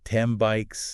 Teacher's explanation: the N adapts to the following B sound. Both M and B involve the lips coming together.